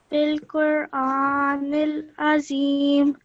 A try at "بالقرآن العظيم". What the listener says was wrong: Excellent, mashallah, well done.